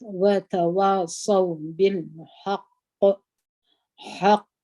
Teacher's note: حق پر دغه ځای باندې قلقله کبرا ده یعنی غټه قلقله ده